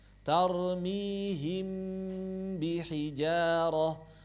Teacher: juga enggak perlu terlalu lama cukup dua harakat saja jangan terlalu lama